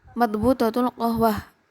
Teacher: qof diubah menjadi Hamzah atau diungkapkan menjadi Hamzah